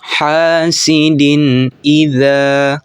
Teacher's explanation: dibacanya itu jelas dan tidak berdengung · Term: izhar khalqi